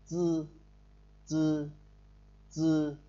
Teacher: Âm nó hơi tắc sát và không bật hơi.